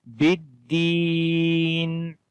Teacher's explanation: And ba we connect with the dal with the strong voice, and then there is ya madda, as ya has a sukun sign on it, and before the ya there is kasra, so we long here one alif or 1 second, we say biddin.